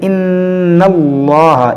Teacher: جلالت اللہ عز و جل کے لام سے پہلے اگر زبر ہو تو اس کو موٹا کیا جاتا ہے